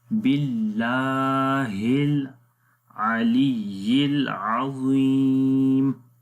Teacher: اللہ کو لمبا کریں گے الف مدہ کی وجہ سے، اور اللہ کے نام سے پہلے زیر آ گئی ہے اس لیے اللہ کا نام باریک پڑھیں گے